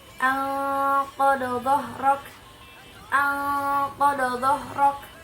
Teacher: Huruf dod diucapkan dengan cara menyentuh tepi lidah dengan gigi geraham. Jadi tepi lidah yang ada di pinggir lidah kita ini menyentuh gigi geraham ketika kita menyebutkan huruf dod atau yang bersifat huruf istitolah.